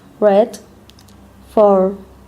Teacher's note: When pronouncing the English sound, the central part of the tongue is at the height of the palate.